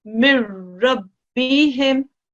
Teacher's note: When a ra mushaddad goes straight after a noon sakin, then the noon sakin is essentially dropped. Yeah, and this becomes a mir. · in practice, this noon is effectively a silent letter. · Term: idgham